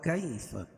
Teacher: یا ساکن سے پہلے زبر ہو تو یا لین اس کو نرم آواز کے ساتھ جلدی پڑھیں گے